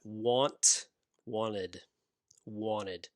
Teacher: it looks interested now a note about pronunciation i'm american and americans will make this t sound very soft in the middle of a word